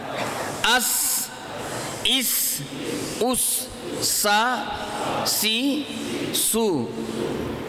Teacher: دونوں دانتوں کو آپ ملا لیں گے اور اپنی زبان کو ان کے کنارے پہ رکھ دیں گے تو سین ادا ہوگا